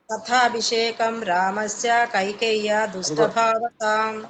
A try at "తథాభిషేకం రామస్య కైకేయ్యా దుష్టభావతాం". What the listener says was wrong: ఇక్కడ కూడా రామస్య అని అనుకోండి, రామస్య కైకేయ్య అని వెంటనే అందుకోవాలి. అంటే దీర్ఘం లేదు కదా, ఆ దీర్ఘం లేనిది చెప్పకూడదు.